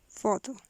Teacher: Fricative. Voiceless fortis labiodental fricative.